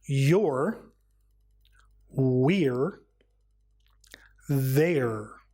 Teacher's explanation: is R as in your we're and there and these contractions the re sound is made by curling your tongue back